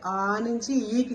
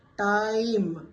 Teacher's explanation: టైం అంటే ఆ నుంచి ఈకి గ్లైడ్ అవుతుంది నెమ్మదిగా సౌండ్ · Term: డిఫ్థాంగ్